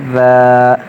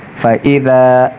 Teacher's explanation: زبان کی نوک کو اوپر سامنے والے دانتوں کی نوک سے نرمی سے ٹچ کریں گے تو ذال ادا ہو جائے گا